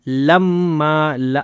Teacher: کیونکہ یہاں پہ میم کے اوپر دو زبر ہے اور اس کے بعد الف بھی ہے تو اس لیے ہم اس کو ما کرنا ہے. اکلل لم نہیں کرنا, میم پہ رکنا نہیں ہے, ما کریں گے